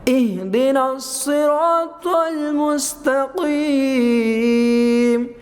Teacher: اس میں طا بھی مستعلیہ والا ہے، صاد بھی مستعلیہ والا ہے، اور آگے قاف بھی مستعلیہ والا ہے، تو اس لیے اس کو ان لفظوں کو موٹا کیا ہے۔ آگے پھر صاد مستعلیہ اور طا مستعلیہ، اور آگے ری یہاں مدہ ہو رہا ہے۔